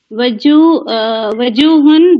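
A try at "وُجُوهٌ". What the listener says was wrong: اچھا اس کو آپ وجوہن نہ کہیں، وجوہن، واو پہ پیش ہے.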